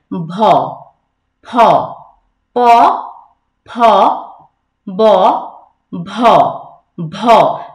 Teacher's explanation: ভ কিন্তু মহাপ্রাণ একটা ধ্বনি, যেটা জোর দিয়ে উচ্চারণ করতে হয়